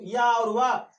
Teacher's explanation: इसमें स्वर का भी आधा उच्चारण हो रहा है, इसलिए हम इसको अर्ध स्वर व्यंजन भी कहते हैं। वा को पढ़ते समय आ का उच्चारण हो रहा है, या का उच्चारण करते समय भी आ का उच्चारण हो रहा है, इसलिए अर्ध स्वर।